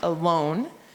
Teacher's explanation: you know that the second syllable is the one that's accented because your chin went down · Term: accented syllable